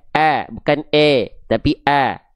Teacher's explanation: Itu yang membuat huruf tipis lebih terdengar tipis ketika dia kita analogikan dengan sedikit senyum. Senyumnya enggak usah berlebihan, cukup sedikit saja. Biar kedengarannya vokalnya A, bukan vokal E.